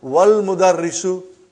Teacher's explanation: Wal mudarrisu, you did not pronounce Hamza. Okay? Because it's Hamzatul Wasal.